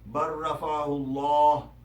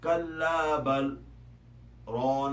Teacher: اس میں لام کی آواز نہیں پڑی جاتی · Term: ادغام